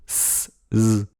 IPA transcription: s z